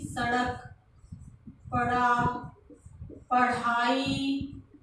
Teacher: उत्क्षिप्त का मतलब होता है एक झटका देना, फिर नीचे आपकी जीभ ऊपर जाएगी, एक झटके के साथ नीचे आ जाएगी। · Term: उत्क्षिप्त ध्वनियां